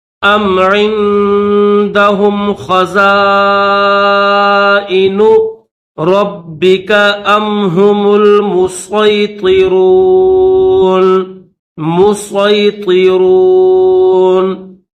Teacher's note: اور اگر ہم سین نہیں پڑھتے بلکہ سواد پڑھتے ہیں تو پھر اس کو موٹا کر کے پڑھیں گے